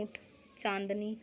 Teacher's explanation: अनुनासिक में इनके उच्चारण देख लीजिए नाक और गले द्वारा होते हैं